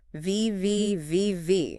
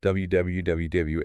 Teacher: V is friction. W is flow.